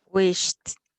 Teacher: this is the sound of the ED, is the T after the voiceless consonant of the letters F, K, P, S, CH, and SH